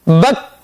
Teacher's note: Huruf kaf, yaitu sama saja semuanya disukunkan. Masalan, bak ini terputusnya suara kita, itu namanya adalah syiddah.